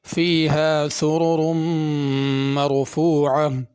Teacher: سرر کی دونوں را اور مرفوعہ کی را، یہ تینوں را پر ہوں گی۔